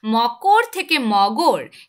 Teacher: ক এটা কিন্তু একটা অঘোষ ধ্বনি সেখান থেকে ঘোষ ধ্বনি গ তে পরিণত হচ্ছে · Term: ঘোষিভবন